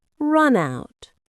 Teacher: The N sound links to out. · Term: linking